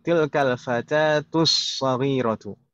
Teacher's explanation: tanpa kata sebelumnya dan setelahnya, as-saghiratu, alnya sudah tidak terbaca. Kalau misalkan kita sambung dengan bacanya ini, kita sambung dengan kata sebelumnya, tetap seperti itu, tilkal fatatus saghiratu. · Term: al-syamsiyah